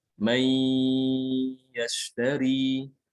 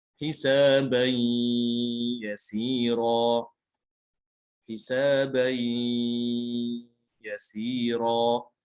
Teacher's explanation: Ada suara dari hidung ya, itu namanya gunnah. Ya, ini namanya dinamakan idgham bi gunnah.